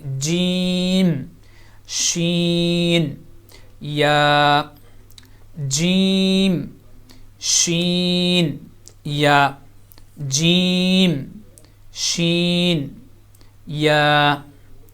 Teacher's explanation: تو یہاں پہ یہ درمیانی حصہ جو زبان کا، یہ اسی طرح درمیان سے آپ اوپر کی طرف تالو کے بالکل سینٹر میں لگائیں گے تو وہاں سے یہ تینوں لیٹر ادا ہوں گے